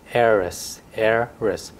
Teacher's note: So the initial H is silent.